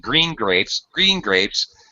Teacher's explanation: when I say green grapes I even have a different intonation I'm saying green grapes green grapes as if it were like a compound noun